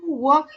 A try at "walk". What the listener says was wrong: need to pronounce walk. Don't say L. Walk.